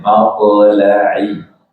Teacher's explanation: toknya jangan malto. Jadi nggak perlu pakai bibir ya. Kalau kita baca malto, jadi itu seperti domah toknya.